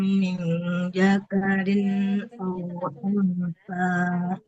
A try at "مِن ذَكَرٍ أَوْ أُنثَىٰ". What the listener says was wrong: Nah, tidak min jakarin. Huruf zal. Za. Min zakarin au unsa.